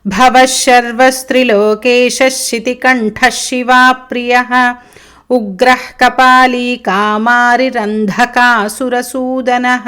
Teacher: ఈ మొత్తం శ్లోకంలో భవ భా మహాప్రాణ, శితికంఠః ఠా మహాప్రాణ, అంధకాసుర అంధ మహాప్రాణ, సూదనః మహాప్రాణ లేదు